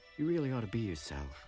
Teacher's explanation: oughta with a flap T